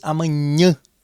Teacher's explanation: Prestem atenção, pessoal, que o som acaba saindo aí pelas fossas nasais. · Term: nasalização